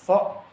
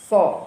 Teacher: Huruf sod ini nanti makhrajnya tetap dari lidah juga, pangkal lidah naik